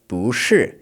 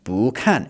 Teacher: The character 不, meaning not, always changes to a second tone when it is before a fourth tone.